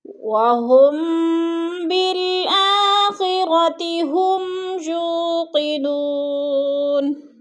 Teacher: یو پہ تھوڑا سا اس کو لمبا کر کے پڑھنا ہے کیونکہ ادھر واو مدہ ہے.